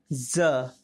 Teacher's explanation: और जब हम नुक्ता वाले ज का उच्चारण करते हैं तो जीभ का अगला भाग मसूरे के अग्र भाग को धीरे से छूता है